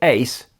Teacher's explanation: they're both the same length these days, and they make the same sound in most of the Netherlander-sphere.